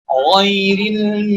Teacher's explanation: huruf ghain merupakan huruf yang mempunyai sifat rikhwah yang berarti mengalirkan suara secara sempurna